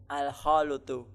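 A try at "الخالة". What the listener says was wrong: Al-khalatu. Iya, bukan al-khalutu. Nah, lamnya di fathah, al-khalatu.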